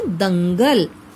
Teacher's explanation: बिंदु अर्थात अनुस्वार को बोलते हुए ध्वनि कहां से निकलती है? नाक से, नासिका से